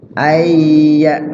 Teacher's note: mimnya sukun jelas dibaca di bibir itu namanya izhar syafawi